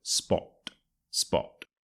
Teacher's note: spot the OT sound is is quite important here and also you will notice that my tone drops as I say that word as well